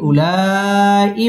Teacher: مد متصل চার আলিফ টেনে পড়তে হবে